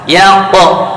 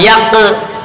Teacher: ya-nya tipis, qafnya tebal, berarti tipiskan dulu baru tebalkan. Yaqo, awas jangan yaqe tapi yaqo.